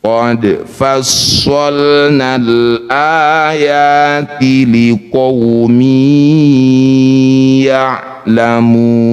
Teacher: Jadilah bacaan namanya mad arid bisukun. Mu panjangkan enam harakat huruf terakhir sukunkan.